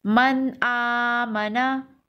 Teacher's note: نون ساکن کے بعد حروف حلقی ہے تو غنہ نہیں ہوگا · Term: اظہار حلقی